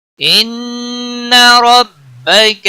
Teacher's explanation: ان نون مشدد پر گنہ ہوگا